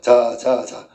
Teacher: 공기의 흐름을 막았다가 틈을 조금 내어 마찰을 일으키는 소리인데 이걸 파찰음이다